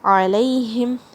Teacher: ہا کی آواز حلق کے سب سے نیچے سے. میم توسط کے ساتھ ادا کرنا ہے، یعنی میڈیم فلو آف ساؤنڈ.